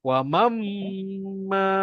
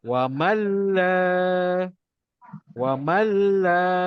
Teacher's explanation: Ingat, dia masuk tapi tak dengung. Kalau tak dengung, satu harakat je lah kita baca. Di bacaan dia akan jadi wa malla.